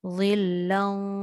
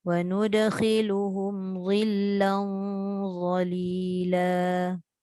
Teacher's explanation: Tebalkan sebab lam sebab tanwin bertemu za huruf isti'la.